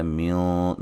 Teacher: نون ساکن کا موٹا اخفا ہے ، قبل با